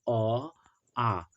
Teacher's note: अ और आ ये दो ऐसे स्वर है जिनका उच्चारण कंठ से होता है